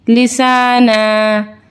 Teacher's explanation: وقف کی صورت میں دو زبر کی تنوین زبر میں اومٹ ہو جائے گی